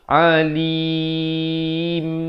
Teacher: ditutupkan akhirnya mulut tu dengan rapat baru sempurna bunyi mim. Kalau mulut tak tutup rapat nanti dengar macam huruf nun nanti.